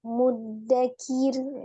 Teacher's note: Roknya dibaca tipis, sebelumnya dia kasrah.